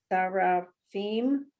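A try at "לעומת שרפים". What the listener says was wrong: So do that one a little more smoothly. Put this with the ra.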